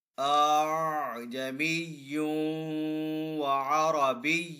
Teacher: آپ نے دوسرے حمزہ کو نرمی کے ساتھ ادا کرنا ہے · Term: تسہیل